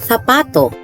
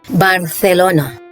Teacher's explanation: In Latin America, the letter Z and the letter combinations CE and CI are pronounced with an S sound, while in northern and central Spain, this is pronounced with Th sound. The Spanish word for shoe is pronounced in Madrid as zapato, and in Latin America is pronounced as Zapato.